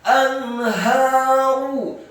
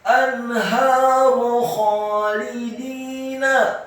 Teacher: ha-nya dibaca tafkhim tebal fathah dua harokat karena setelahnya ada alif. Kemudian ra-nya dibaca dhammah tebal satu harokat.